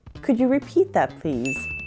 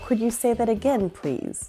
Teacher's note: Most likely if it's a request it will end in please which must be pronounced with a rising tone